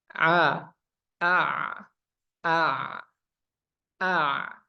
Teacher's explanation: huruf Ain dia sifatnya jahar Nah jahar itu tadi napasnya ditahan